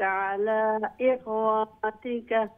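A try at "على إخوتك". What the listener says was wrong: واو لونگ নাই, واو শর্ট. আলা ইখওয়াতিকা, ওয়াও খাড়া জবরও নাই, আলিফও নাই.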